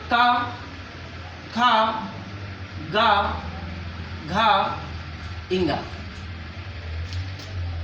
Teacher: ये सब के सब कंठ से निकलने वाले व्यंजन है